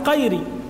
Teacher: فيغلب اللهجه في قراءته للقران يقلب الغين قاف